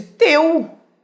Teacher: O E já é mais forte que o U